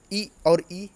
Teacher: इ और ई ये ताल मतलब ऊपरी भाग से बोले जाते हैं